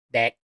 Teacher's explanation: you just have to swallow the K · In Thai, unlike in English, your throat is going to just stop and you're going to swallow the sound. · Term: dead